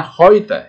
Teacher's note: Jika bertemu dengan gabungan huruf 2 ini EU, maka kita harus membaca oi, ya. Oi.